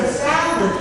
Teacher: salad, the second syllable is that schwa sound.